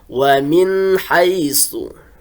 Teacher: ini ada kata atau huruf nun mati bertemu dengan ha, maka dijelaskan suara nun matinya. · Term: izhar halki